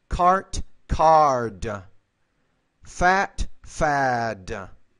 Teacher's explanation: a voiceless consonant the D is a voiced consonant which means the vowel which precedes the voice consonant should be longer